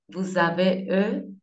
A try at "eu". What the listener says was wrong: Oui, ça peut fonctionner avec eux, mais pour être le plus précis au niveau de la prononciation, U. on va prononcer U.